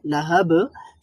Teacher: তো লাহাব এর মধ্যে যেই কলকলাটা হবে লাহাব, সেখানে হবে দ্বিতীয় প্রকারের কলকলা, অর্থাৎ সেখানে স্ট্রং একটা কলকলা হবে, শক্তিশালী কলকলা হবে।